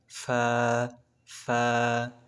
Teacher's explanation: নিচের ঠোটের পেট উপরে দুই দাঁতের আগার সাথে লাগিয়ে ফা ফা চিত্রে যেভাবে দেখতে পাচ্ছেন সেভাবে ফা ফা ফা 15